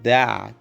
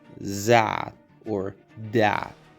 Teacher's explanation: is like a D, but instead of being in the back of the teeth, it's a little lower and forward between the teeth. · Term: voiced TH